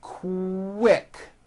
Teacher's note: the word quick is pronounced with a K and a strong W sound